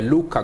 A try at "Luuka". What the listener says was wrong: Luuka. When you're speaking Lusoga, never rush your tongue. So you never rush. Luuka.